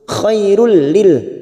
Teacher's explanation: yang bertemu lam idgham bila gunnah, hanya masuk tanpa mendengung, tanpa ditahan lama-lama, hanya masuk. Khairul lil, namanya idgham bila gunnah.